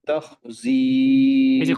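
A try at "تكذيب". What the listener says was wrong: খয়ের দিকে চলে যায়। খ বা কাফই না এটা তো খয়ে যাওয়া যাবে না। খ একটা জায়গায়, খ একটা হচ্ছে যে আমাদের এই যে যেমন উপরের জিহ্বার উপরে যে তালু, এখানে খটাই জায়গায়, কিন্তু খটা ভিতরের দিকে। তো ভিতরে যাতে না যায়, এই উপরে যেতে যায় ক খ, ক খ এইটুকু।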